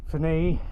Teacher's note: Emphasis on the last syllable